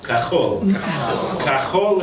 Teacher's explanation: the cha comes from the back top of the roof of your mouth like you spit when you say it